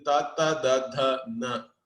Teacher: Murdhanya means it is coming from the top of your mouth. Correct? You have to roll your tongue towards your skull.